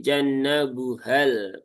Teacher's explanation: Nah, maka madnya hilang menjadi pendek menjadi jannabuhal bukan jannabuhal. Jadi H-nya tidak lagi menjadi panjang, tetapi menjadi pendek karena madnya dibuang atau dihazfkan. Itu adalah kaidah iltiqus sakinain.